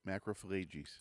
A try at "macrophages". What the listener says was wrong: There's no L in there, though.